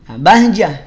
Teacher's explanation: saat ta marbutah kita wakaf di Ta marbutah Maka ta marbutahnya ganti jadi bunyi H